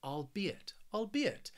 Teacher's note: this word has three syllables and the stress is on that second syllable